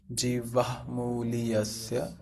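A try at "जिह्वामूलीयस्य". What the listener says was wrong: First you have to tell ha and then the ba. Jihvamuliyasya. First you have to tell ha.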